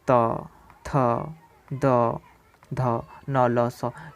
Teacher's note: ये सारी चीज़ें दंत से उच्चारित होती है तो इसे हम दंत वर्ण कहेंगे